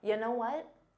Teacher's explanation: So it sounds like one word. You know what may have been difficult to hear because it becomes unstressed.